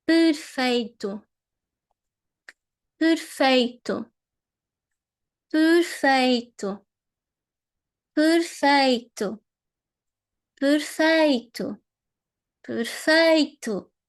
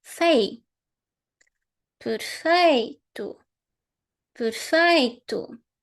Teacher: It's down, low, and then it goes up, and then it goes down again. Because the highest syllable is the one in the middle.